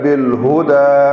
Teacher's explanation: بالہدا میں ہا جو ہے وہ سینے سے اس کی آواز نکلے گی